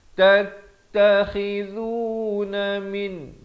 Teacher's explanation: dhu di hujung lidah